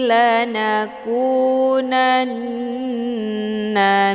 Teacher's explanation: minasyakirin tasydid di huruf nun dinamakan dengan nunah musyaddadah cara bacanya nunnya dileburkan ke dalam Nun yang berharakah dengan cara ditekan kemudian ditahan lebih kurang dua kali ketukan